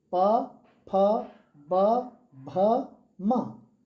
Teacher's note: दोनों ओठ जुड़ रहे हैं इसके उच्चारण में, इसलिए इनको कहा जाता है ओष्ठ व्यंजन, · देखिए इसके उच्चारण में हमारे दोनों होंठ, ऊपर नीचे के दोनों होंठ मिलते हैं इसके उच्चारण में, इसलिए इसका नाम दे दिया गया ओष्ठ।